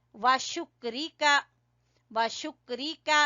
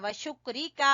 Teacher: का को आपने छोटा पढ़ना है, व शुक्रिका और बारीक काफ है